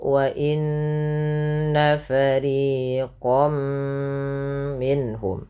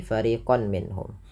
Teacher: masukkan tanwinnya bunyi nunnya mengganti dengan bunyi mim. · Karena di sini masuknya kepada huruf mim, maka langsung dibaca masuk ke huruf mim, yaitu wa inna fariqam minhum, tidak lagi fariqan minhum, karena dia dihukumi dan idgham, artinya memasukkan bi gunnah disertai dengan penahanan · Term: idgham bi gunnah